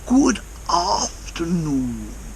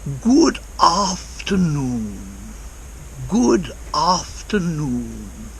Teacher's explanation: when very posh people talk they tend to make the vowel sounds at the ends of words or at the ends of phrases much longer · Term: elongation